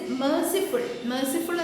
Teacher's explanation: the dactylic in which the accented syllable precedes 2 unaccented as in merciful എന്ന വാക്കിലുള്ളതുപോലെ 2 അൺആക്സെൻറ്റഡ് സിലബിളിന് ശേഷം ഒരു ആക്സെൻറ്റഡ് syllable വരുന്നു.